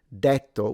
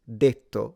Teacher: In standard Italian, the E is closed. So rather than detto, which a lot of Italians use, but the standard is detto with a closed E.